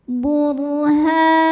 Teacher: Ra sukun dibaca secara tafkhim karena huruf sebelumnya berbaris di atas yaitu baris dhammah. Cara bacanya ditebalkan.